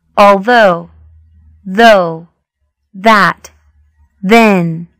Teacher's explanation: phonetics the voiced Dental fricative